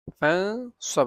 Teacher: নুন সাকিনের পরে সাদ আসছে ইখফা গুন্না